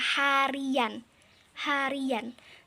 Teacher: setelah huruf I di situ seperti terdengar ada bunyi Y, padahal tidak ada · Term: bunyi pelancar